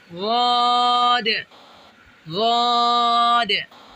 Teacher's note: غاد، غاد، زبان کی کروٹ جب بائیں طرف والی اوپر کی 5 ڈاڑوں سے لگے تو غاد ادا ہوگا۔ احتیاط: ہونٹ گول نہ ہو اور دال ساکن پر قلقلہ کیا جائے۔